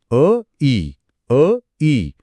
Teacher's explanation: उच्चारा >> अ इ अरे इथे मात्र माझा जबडा हलतोय >> म्हणताना जीभू वरच्या बाजूला जाते आणि ओठ थोडे पसरतायत >> बरोबर कारण अ आणि इ हे वेगवेगळ्या ठिकाणांहून उच्चारले जाणारे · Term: विजातीय स्वर